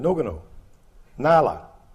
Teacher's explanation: with tongue between the teeth for both the N and the L